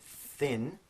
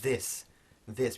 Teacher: So that difference in phonetics is called voiced and voiceless. So the thin is voiceless, and the th in this is called voiced.